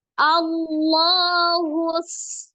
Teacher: maka alirkan dulu huruf dalnya ketika diwakafkan maka dipantulkan ya menjadi huruf Qalqalah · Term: Qalqalah Kubro, qalqalah kubra